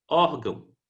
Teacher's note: ó é pronunciada com mais força do que a sílaba dão